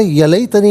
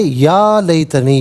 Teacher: یا کو ایک الف کی مقدار کھینچ کر پڑھیں گے